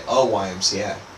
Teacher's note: Y as a letter actually it's more like a W sound, but that's also a consonant sound. So we say a YMCA.